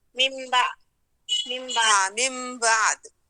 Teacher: یعنی وہ جو دال ہے اس کا کلکلہ بھی آپ کو ملے · دال کی جو حرکت ہے اس کو ساکن کریں گے